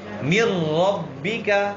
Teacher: اس میں نون ساکن یہ را میں داخل تو ہوگا لیکن غنہ بغیر غنہ کے. من ربک، ادغام کہتے ہیں ایک حرف کو دوسرے حرف میں داخل کرنا، اور ادخال الشیء فی شیء، ایک چیز کے دوسری چیز کے اندر داخل کرنا. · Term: ادغام بغیر غنہ